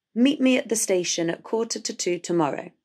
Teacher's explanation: we have the preposition at twice which becomes ut in connected speech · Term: schwa